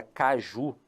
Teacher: Ele percebeu que a última sílaba, o ju, era a sílaba forte.